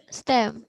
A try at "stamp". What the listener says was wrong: Itu A-nya bacanya Jadi stem. Ingat, di belakangnya ada huruf P, bukan stem aja. Tapi ini bacanya stamp. Ada P di belakangnya.